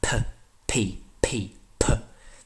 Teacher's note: in English you have there is a puff of air after you say the letter P P / there's a blast of air that comes out of